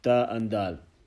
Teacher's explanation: letter dal, pronounced when the tip of the tongue touches the back of the upper front two teeth, central incisors